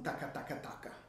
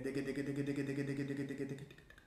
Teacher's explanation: noterete appunto che è la punta della lingua a lavorare, sia per la D che per la G, diciamo per il semplice e per il colpo doppio.